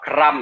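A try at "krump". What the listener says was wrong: Pakai U, bukan pakai A ya.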